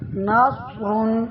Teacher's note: صاد کی آواز موٹی اور سیٹی والی ہوتی ہے